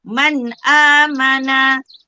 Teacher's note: Nun mati bila jumpa dengan alif, bila jumpa dengan hamzah mesti dibaca dengan terang.